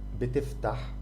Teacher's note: So your throat is not really very, like, it's not open like when you pronounce the ha. It's not relaxed. It's a bit tighter. It's ha. You're trying to block the air a little bit. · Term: the letter ha